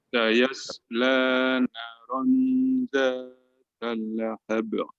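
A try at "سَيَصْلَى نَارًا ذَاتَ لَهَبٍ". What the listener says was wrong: Thayyib, di sini ta jangan dimasukkan ke lam langsung ya. Sayasla naron zatal lahab langsung. Bukan talahab tapi talahab. Talahab langsung gitu Pak. Zatalahab.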